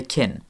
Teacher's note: Because the vowel I is further forward in the mouth, the k before it also moves slightly too, becomes palatalized.